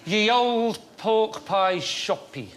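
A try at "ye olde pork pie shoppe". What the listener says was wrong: Oh, no. It's not... That's not pronounced ye. It's pronounced... It's the.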